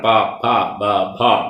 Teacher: ചുണ്ടുകളെ തമ്മിൽ ചേർത്ത് ശേഷം വിട്ട് ഉച്ചരിക്കുന്ന വർണ്ണങ്ങളാണ്